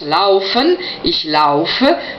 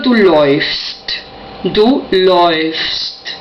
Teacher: Y luego tenemos otro cambio más, que claro, al tener diptongo A, U, la inflexión vocálica, es decir, umlaut, cae sobre la A, por lo tanto el sonido pasa a OI.